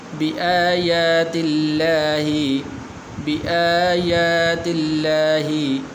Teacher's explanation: حمزے کے اوپر بھی کھڑی زبر ہے، یا کے اوپر بھی، دونوں کو آپ نے لمبا کرنا ہے